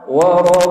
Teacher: pastikan wau tu dinipiskan sebab ada R